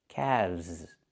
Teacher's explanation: The L is silent, and we pronounce the V sound with vibration, plus the Z sound like zebra. Together, calves.